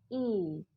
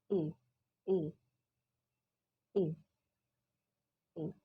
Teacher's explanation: Front high vowel. Bunyi vokal yang berada posisinya pada bagian depan dan posisi lidah lagi tinggi.